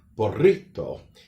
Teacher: the Spanish way would have what we call a rolling R